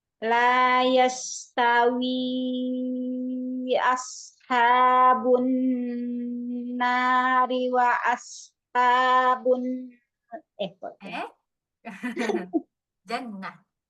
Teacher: Hati-hati, sinnya tipis kan tajam kan, jangan sampai ada terdengar suara menyebar, jadi kayak shin nanti. Dia kan sin ya, bukan shin.